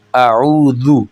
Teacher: زبان کا کنارہ اوپر والے دانتوں کے کنارے کے ساتھ جب یہ ٹچ ہوگا تو یہ نکلے گا ذال